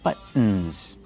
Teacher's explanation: Use the stop T, but, and then go to the N.